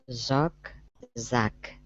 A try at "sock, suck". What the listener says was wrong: Okay, so I'm hearing the Z here. What it sounds like to me is you're saying Zock, Zuck.